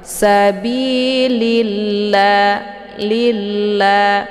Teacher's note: lamnya dimasukkan ke dalam la yang kedua ataupun dileburkan dengan cara ditekan langsung masuk ke lafdzul jalalahnya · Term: idgham syamsiyah